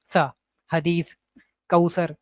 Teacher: आप अपनी जुबान की नोक ऊपर वाले जो दांत के किनारे से लगाएं और सा अदा करें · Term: सा का मखरज